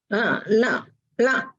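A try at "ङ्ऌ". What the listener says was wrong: Again here, I hear it as la. It should be heard as l. So what you know how to pronounce nga, right? Ka, kha, ga, gha, nga. From the throat. So nga should come from the throat.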